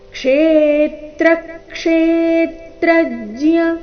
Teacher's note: ಕ್ಷೇತ್ರಜ್ಯ ಮೊದಲನೇ ನಾಲ್ಕು ಅಕ್ಷರಗಳ ಮೇಲೆ ಆಘಾತ